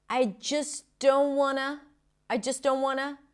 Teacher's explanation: The T after an N when it's unstressed in this case in a function word is often dropped.